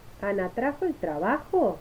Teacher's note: En las preguntas totales, que son las que se responden con sí o con no, se espera una respuesta general y una figura tonal que la identifica. Suele presentar un ascenso en el final de la oración casi antes del descenso final.